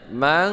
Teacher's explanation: ini ikhfa hakiki, dibaca berdengung dua harokat samar ya